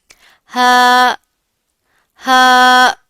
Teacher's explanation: हलक का वह हिस्सा जो सीने के करीब होता है वहां से हा का इखराज होता है।